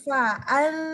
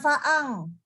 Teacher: bacanya di an, bukan di ang. An. Tapi dengan makhraj huruf zal. Jadi fa'an.